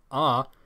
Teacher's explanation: As I said, in Sanskrit there is no phonemic glottal stop at the beginning of consonants, but if asked to pronounce the sound ah, they would likely pronounce it as I did, with a glottal stop in the beginning